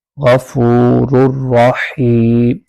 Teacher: غفور الرحیم غین کو پر کر کے پڑھیں گے